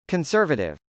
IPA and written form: kənsˈɝvətɪv (conservative)